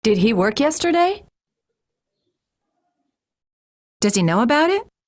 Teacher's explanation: it goes higher at the end of it so it's a rising tone